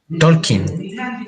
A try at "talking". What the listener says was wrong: The L doesn't sound, the L doesn't sound.